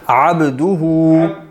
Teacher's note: با پہ کلکلا بھی ہے. عبدہ، با ساکن ہے نا